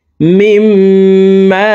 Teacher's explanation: দেখুন, হরকতের বামে নুনে মিমে তাসদিদ হইলে সর্ব অবস্থায় নাকের বাসি থেকে গুন্নাহ করিয়া পড়িতে হয়। তো এই জেরওয়ালা মিমটি তাসদিদওয়ালা মিমের সাথে 3 সেকেন্ড পরিমাণ গুন্নাহ করে পড়ব। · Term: ওয়াজিব গুন্না